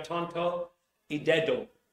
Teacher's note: español interdentales no se posiciona la lengua entre los dientes no tonto y dedo en inglés son alveolares en el Bridge se pronuncian en el alveolo arriba del diente